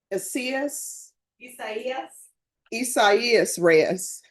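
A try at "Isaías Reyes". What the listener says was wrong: You pronounced every vowel.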